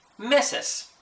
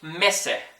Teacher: But if you're from like Chile, for example, or if you're from like Venezuela, or some places in Venezuela, they might say mese, right? So they take that S at the end of meses, and they just choose not to pronounce it